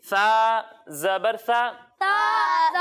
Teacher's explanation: जब हम सा की अदायगी करेंगे तो इसे बारीक पढ़ेंगे और इसमें सीटी की आवाज भी नहीं आएगी